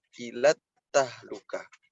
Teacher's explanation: bukan ilal tahlukah, tapi langsung masuk ke ta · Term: alif lam syamsiyah